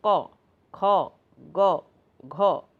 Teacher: कंठ का मतलब होता है गला, जो हम गले से बोलते हैं, जिसको बोलने में गले की सहायता ली जाती है